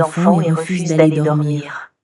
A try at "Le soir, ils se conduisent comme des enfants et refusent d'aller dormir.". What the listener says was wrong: Le soir, ils se conduisent. Ah, that's right, because the conjugation, we do not say ENT at the end. So we don't say conduisant, we say conduisent. Comme des enfants liaison, des enfants et refusent d'aller dormir.